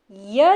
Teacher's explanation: य जो है वह तालु को स्पर्श करती है। इसीलिए इन्हें तालव्य में रखा जाएगा।